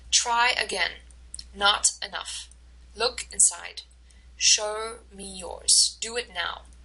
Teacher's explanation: notice how it's a strong stress uh weak stress strong stress